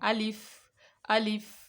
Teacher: अलिफ मुंह के खाली हिस्से से अदा होता है